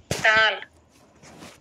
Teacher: دال زبان کی نوک کو اوپر والے دانت کے جڑ سے ٹچ کر کے پڑھتے ہیں۔